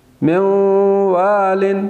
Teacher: نون ساکن کے بعد واو، یہاں پہ بھی ادغام غنہ کے ساتھ